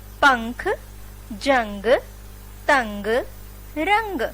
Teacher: अनुस्वार का जब हम उच्चारण करते हैं तो हमारे नाक से ध्वनि निकलती है, जैसे अंग। बोलने पर हमारे नाक से ध्वनि निकली, इसको हम बिंदु लगाकर प्रदर्शित करते हैं, जैसे पंख, जंग, तंग, रंग।